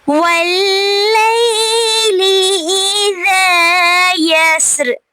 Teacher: لئی پہ مد لین ہو رہی ہے کیونکہ یا ساکن سے پہلے زبر آ رہی ہے. اذا پہ الف مدہ ہو رہا ہے اور یسر پہ را پہ ہم وقف کریں گے تو را کو ساکن کر دیں گے.